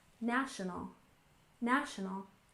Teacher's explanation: National has stress on the first syllable, national, national.